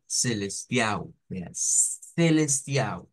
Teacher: en español pero lo vamos a decir como celestial ve celestio cambiando esa L por u